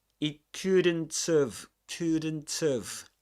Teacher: In have, the auxiliary verb have, we drop the H at the beginning.